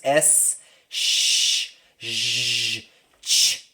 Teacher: S's are what we call sibilants. S, sh, zh, ch. All these sounds are very high frequency. They're like 3K above.